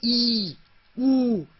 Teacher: संवृत, यानी कि मुंह ज्यादा बंद रहता है, माने कि बिल्कुल बंद नहीं हो जाता, लेकिन उसका स्थान हवा का थोड़ा सा कम होता है, जैसे ई, ऊ, इनको हम लोग उच्च स्तर के स्वर कहते हैं।